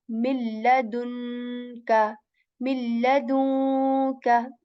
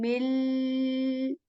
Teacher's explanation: we'll do the complete assimilation of meme into lam, and no nasal sound or no nasal, no sound of noon will remain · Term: complete idgham